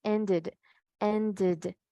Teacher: podría decir que había sonido de la E, pero realmente no suena como una E, ¿verdad? Sino como una I.